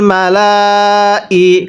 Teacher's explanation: ফানা দাত হুল, মিম জবর মা, লাম খারা জবর লা, এই লামের মধ্যে চার আলিফ টানতে হবে।